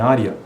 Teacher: Área, por mais que seja um E, né? E-A, na verdade, na pronúncia é I. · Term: ditongos crescentes